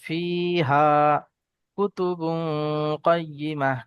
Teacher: জি জি জি ফায়াজের ফি, ইয়া মাদ্দা এক আলিফ টানা হবে, হা আলিফ জাবার হা, আলিফ মাদ্দা এক আলিফ টানা হবে, ফি হা কুতুবুন কাইয়্যিমাহ, কাফ পেশ কু, তা পেশ তু, কুতু, বা দু পেশ বুন, কুতুবুন।